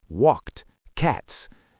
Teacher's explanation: You need that little t sound at the end of walked to show it happened in the past. It's a tiny sound, but it carries a lot of meaning.